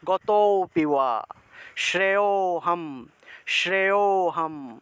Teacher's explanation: লুপ্ত ও যে জায়গাতে থাকবে তার আগের অক্ষরটাকে একটু টান দিয়ে উচ্চারণ করতে হয়